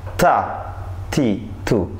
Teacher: huruf ta keluar dari ujung lidah menyentuh pangkal dua gigi depan atas dekat dengan gusi